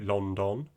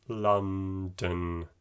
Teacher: the second o imagine that it's not there imagine that it's being kind of taken out